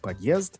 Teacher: I learned to put the stress on the second syllable and to pronounce the O more like an A. I learned to pronounce the letter D as hard, not soft.